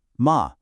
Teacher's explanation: if you use a dipping tone, ma, you are saying horse.